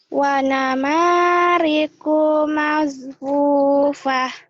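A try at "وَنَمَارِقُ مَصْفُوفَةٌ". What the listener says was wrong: Bukan mas sod ya. Wa namariku masfufah sod masfufah.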